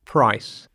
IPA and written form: praɪs (price)